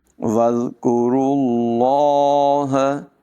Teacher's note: را کو یہاں لفظ اللہ کے لام کے ساتھ ملائیں گے